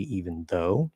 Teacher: When it's linking with an N, then instead of doing because it's a voiced th, you can go into a dental N and then push out a dental D